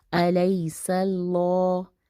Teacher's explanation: سین باریک اور پھر اللہ موٹا پڑھا جائے گا کیونکہ اللہ سے پہلے زبر آ رہا ہے